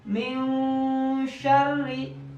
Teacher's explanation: Kalau ifa ausat lebih ke mendekati mim cara bacanya.